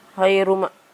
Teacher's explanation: Kelima, ini yang berbeda, yaitu hayruma sama dengan idgham biguna. Karena ada dhammah tanwin bertemu dengan huruf mim, cara membacanya masuk dengan mendengung.